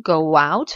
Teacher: liaison entre Go et out W invisible